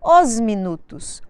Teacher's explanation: os minutos os minutos o que que aconteceu com essa palavra nós damos a sonoridade de Z ao s e ligamos fazemos um link entre o artigo no plural e o próximo substantivo